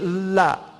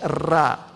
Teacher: And then lam and ra are related. They're from the same makhraj.